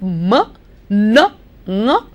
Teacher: Instead of the air coming out of your mouth, more and more air comes out of your nose. And so we have a nasal sound.